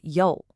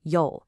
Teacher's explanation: That's a sharp falling fourth tone.